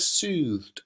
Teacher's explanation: It's got that, the diphthong, the elongated vowel sound, the sibilance of the s sound, so it's quite a gentle sounding word.